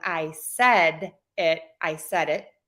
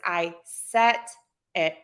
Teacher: a lot of native speakers will Mark that difference with a little bit of a different vowel length